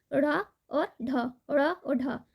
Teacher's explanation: जीव के अगले भाग को थोड़ा ऊपर उठाकर झटके से नीचे फेंकते हैं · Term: द्विगुण व्यंजन